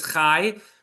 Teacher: So the yud actually makes the patach go further. It's like a y at the end.